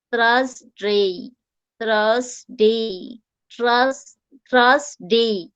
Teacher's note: তো আমি যখন TH টা হবে তখন আমার জিহ্বাটা দুই দাঁতের মাঝখানে চলে আসবে, জিহ্বাটা আমার দুই দাঁতের মাঝখানে চলে আসবে।